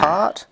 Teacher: We have R as in part, which is low, central, and unrounded.